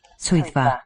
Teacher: the double D is for the voiced interdental